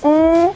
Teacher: से बताइए क्या डाल रही हूं मैं बिंदु वृद्धि यह देखो मेरी नाक की मदद से बोल रही हूं इसीलिए यहां पर अनुस्वार है